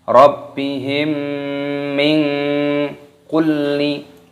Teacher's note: nun sukun bertemu dengan kaf, hukumnya dibaca ikhfa, disamarkan. Min itu namanya samar.